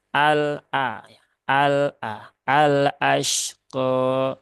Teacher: lam sukunnya ini dia terbaca dengan ee baik ya tetapi ingat lam itu dia tidak punya sifat syidah ya dia punyanya adalah tawasut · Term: lam qamariah